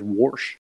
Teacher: you have those vowels that take on a hard R